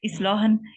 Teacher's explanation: इस पे लाम के बाद जो अलिफ है ये बारीक पढ़ा जाएगा